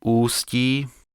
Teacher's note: enfin le coup de glotte de Ústí, indispensable devant toute voyelle initiale.